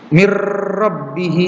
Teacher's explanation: tidak ada dengung walaupun sama-sama melebur ke huruf setelahnya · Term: idgham bil gunnah